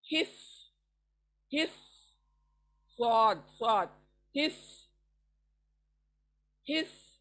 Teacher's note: हा अदा होता है सेंटर ऑफ द थ्रोट, स्वाद अदा होता है सामने से, दांतों को हमारी जुबान लगने से, जुबान की जो पॉइंट है सामने की वो लगने से।